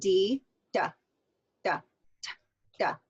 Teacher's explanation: one are these stop Sounds here like T and D so notice that your tongue when you say t hits that Ridge